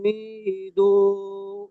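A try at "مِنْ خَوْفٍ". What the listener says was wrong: মিন খাও, এই নুনটা গুণনা হবে না। ফালইয়া, আচ্ছা এখানে ওয়া আমানাহুম, মিমটা তো গুণনা হবে তাসদিদ থাকার কারণে, কিন্তু নুন সাকিনের পরে খ এসছে হরফে হালকির মধ্যে, তাই বিনা গুণনায় জাহির করে পড়তে হবে ওয়া আমানাহুম মিন খাউফ।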